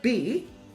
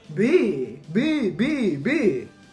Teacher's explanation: If you say B, you will notice that it's not actually very voiced at all. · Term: lenis, Lenis